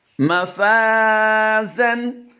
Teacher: اس الف کو ہم فا کی وجہ سے باریک کریں گے، لیکن الف ما قبل مفتوح ہے اس لیے ہم یہاں پر الف مدہ کریں گے، یعنی ایک الف لمبا کر کے پڑھیں گے۔ مقدار اس کی ایک الف ہے، یعنی میکسیمم 1.5 سے 2 سیکنڈ ہم لمبا کر کے پڑھتے ہیں اس کو۔